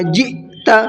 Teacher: قالوا الآن جئت، جئت کے اندر دیکھیے حمزہ ساکنہ ہے اور حمزہ ساکنہ کے پڑھنے میں جھٹکا ہوتا ہے